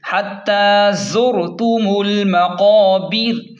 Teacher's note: وقف کی صورت میں را کو ساکن کریں گے اور ساکن کر کے را کو باریک پڑھیں گے کیونکہ را ساکن ہو گئی تو اس کا پہلے والا حرف جو ہے نا اس پر زیر ہے، اس لیے را کو باریک پڑھیں گے۔